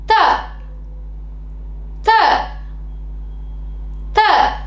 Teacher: நாக்கின் நுனிப்பகுதி மேல் பல்லின் அடிப்பகுதியை பொருந்தி இருக்கு இல்லையா இப்போ நம்மோட நாக்கின் நுனியைக் கொண்டு மேல் பல்லின் பகுதியை பொருந்துமாறு வைக்கணும்